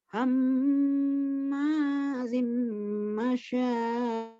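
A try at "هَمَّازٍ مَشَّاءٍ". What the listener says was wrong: Kurang shinnya kurang tasydid. Ulang lagi. Shinnya kurang tasydid.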